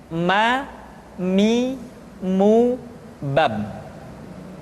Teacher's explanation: Selanjutnya huruf ma diucapkan dengan cara merapatkan dua bibir.